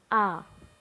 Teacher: किसी मूल स्वर या ह्रस्व को उसी के साथ मिलने से, कोई मूल स्वर है या ह्रस्व, जो जिसको हम कह रहे हैं मूल स्वर ही तो ह्रस्व स्वर है, उनके मिलने से जो स्वर बनता है वह दीर्घ स्वर कहलाता है। इनके उच्चारण में 2 मात्रा का समय लगता है, इन्हें द्विमात्रिक भी कहते हैं।